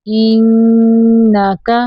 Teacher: نون مشدد پہ غنہ کرنا ہے